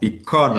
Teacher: the syllable that is the second one from the left will have the stress.